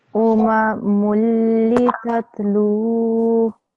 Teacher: You have to make the lam long because of the vowel mad.